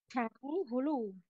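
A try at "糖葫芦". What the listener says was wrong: Không phải hú lù nhá. Tháng hú lù. Hú lù. Hú lù, đúng rồi.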